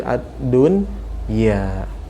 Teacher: Kalau terjadi dalam satu kata, maka tidak terjadi idgham seperti pada kata ad-dunya ya. Tidak dibaca ad-duya tapi ad-dunya.